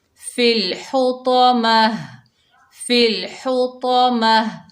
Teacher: हा को हलक के दरमियान से अदा करेंगे। तो जो है हैवी लेटर है, मोटा अदा होगा।